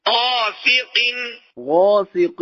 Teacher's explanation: غاسق میں غین پر الف بھی پر